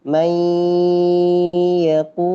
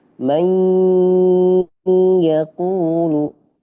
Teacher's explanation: Maka ketika bacanya harus masuk ke khaisyum, harus masuk ke hidung. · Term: ghunah